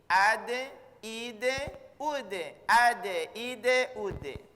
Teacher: Kemudian karena dia punya sifat kalkala, ada dipantulkan, maka cara bacanya harus dipantulkan. Khusus huruf da, dia pantulannya condongnya ke bunyi e.